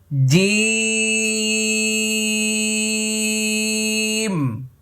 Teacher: দেখেছেন ঠোট কিভাবে লেগে গেছে কারণ জিমের শেষে মিম